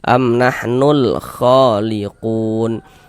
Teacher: huruf lamnya dibaca izhar, dibaca jelas, terbaca huruf lamnya